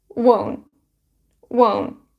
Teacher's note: and won't has o diphthong sound o won won and also we have here stop t we don't release t